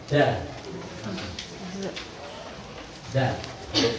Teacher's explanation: Ujung lidah dengan pangkal gigi seri atas.